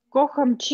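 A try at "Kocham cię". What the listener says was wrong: Только не чи, А чем. Чем.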